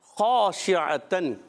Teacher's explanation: ख़ा का मखरज हलक का ऊपर वाला हिस्सा उर्फ़ अलक़िया में से भी है, उर्फ़ मुस्तालिया में से।